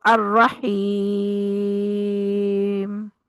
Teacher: لیکن جب وقف کریں گے نون کو ساکن کریں گے تو می جو ہے وہ یا مد ہے تو اس کو العالمین اتنا لمبا کریں گے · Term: مد عارض وقفی